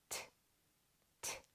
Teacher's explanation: tongue going up behind your top teeth and it stays there this T is a voiceless sound there is no voice used only air